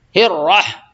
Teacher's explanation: بسم اللہ الرح یعنی یہاں را کو موٹا کریں گے کیونکہ را پہ جو ہے زبر ہے، را مشدد پہ زبر ہے